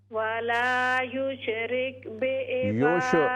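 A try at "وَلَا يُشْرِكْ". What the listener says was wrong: युश कलकला नहीं है, वला युशरिक, युश ये कलकला है तो गलत हो जाएगा। वला युशरिक बिइबादति रब्बिही अहदा,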